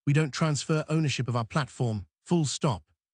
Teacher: the late-night FM DJ voice, slow, calm, low, with a downward inflection at the end of your sentences. A downward inflection says, "This is settled.